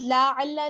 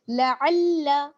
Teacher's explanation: لام کو کھینچیے گا مت، لا علا نہیں بلکہ لعل.